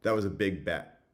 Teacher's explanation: before a pause that's the place where you're most likely to get glottalization